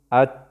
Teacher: ات اواز زمونږ د غاښونو د جړلې د لاندې نه ودرېدو